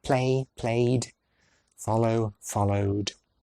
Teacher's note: It takes no effort to add that voiced d because the last sound is already using the voice box. Base forms ending in a vowel-like sound, like A or O, will end with a d sound in the ed ending, like play, played, follow, followed.